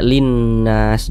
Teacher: cara membacanya itu baca idgham jadi dari li ini langsung masuk ke huruf nun yang iniah jadi dibaca Linnas jadi jangan bingungah makanya alif lam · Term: alif lam syamsiah